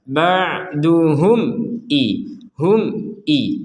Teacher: Ada mim sukun bertemu dengan hamzah, kita baca dengan jelas.